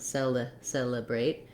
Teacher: We do have first syllable stress here. So my first letter E is a tense vowel like in red or in cell.